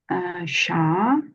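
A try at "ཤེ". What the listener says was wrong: Che. this last S makes instead of sha, it makes it like a shay, like an AI together. Shay.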